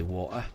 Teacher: I do not pronounce the T in water.